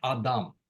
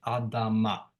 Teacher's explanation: So if you have a word like Adam, man, second vowel A, okay, you add a suffix, you get Adama. Nothing happens to the vowel between the D and the M. It stays the same.